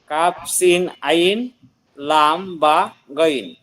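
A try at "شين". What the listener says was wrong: শিন, শিন হবে, সিন না, শিন। ওকে, কাফ শিন আইন,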